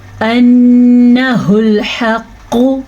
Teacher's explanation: قاف کو موٹا پڑھیں گے قاف کے اوپر پیش ہونے کی وجہ، قاف حروف مستعلیہ سے ہونے کی وجہ سے.